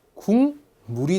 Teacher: 미음을 만났습니다 비음 셋 중에 하나로 변하겠죠 자 역시 이응으로 변했습니다 비음이 아니었던 기억이 비음으로 변했죠